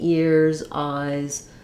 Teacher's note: the most common sound that s says in a plural would be the z sound